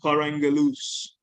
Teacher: where the last vowel has dropped out in the preposition · these prepositions lose their accent and are pronounced with the following words